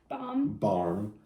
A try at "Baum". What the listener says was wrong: No, not Baum with an R. It's like Baum, kind of. Baum.